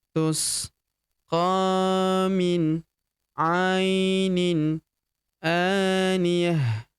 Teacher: Ta marbutah di ujung berubah menjadi ha sukun ya, karena kita hentikan bacaan kita di ujung sini ya.